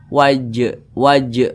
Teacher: samping huruf Qalqalah itu ada lima salah satunya huruf Jim jadi apabila di dia sukun maka bacanya itu dipantulkan